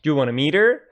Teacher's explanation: Want and to together are pronounced wanna.